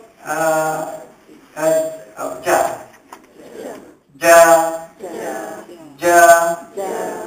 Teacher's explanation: Kita nak sebut huruf jin tu suara kita tertahan